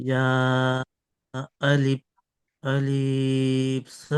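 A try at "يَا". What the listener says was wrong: আলিফটা টান নেই, আলিফটি টান নেই।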